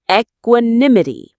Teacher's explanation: The main stress is on the third syllable.